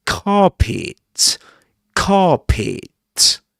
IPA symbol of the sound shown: ɑː